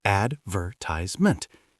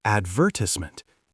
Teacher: Americans put the stress on the A at the start. Advertisement. British people stress the ver in the middle.